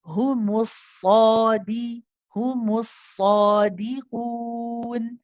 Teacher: you get the dal, you pronounce the kasra, make it nice and sharp